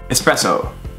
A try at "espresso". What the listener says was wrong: Most Americans would pronounce that espresso with an X. And again, there's no X in there. It's espresso.